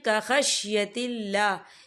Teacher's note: یہاں اللہ کا نام باریک پڑھا جائے گا کیونکہ اللہ کے نام سے پہلے زیر ہے